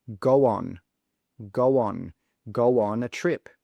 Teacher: We add a w sound in the middle to be able to join those two words together